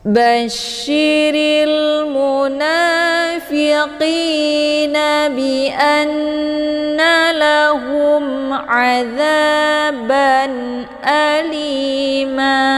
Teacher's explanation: mimnya dibunyikan secara jelas atau jelas bunyi M-nya. Cukup ditekan, tidak perlu ditahan. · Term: idhar syafawi